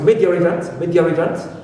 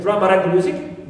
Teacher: when they have two vowels together, sometimes they create a transitional R. Right, transitional R to link the two vowels. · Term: intrusive R